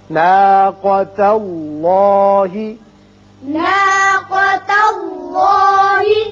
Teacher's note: ناقہ نہیں پڑھیں گے، ناقا قاف کو پر پڑھتے ہیں. اسی طرح اس میں اللہ میں لام پر ہوگا کیونکہ پہلے زبر ہے.